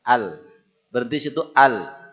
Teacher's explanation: Kalau ujung lidah ini kita naik ke langit-langit yang sejajar dengannya al. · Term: makhraj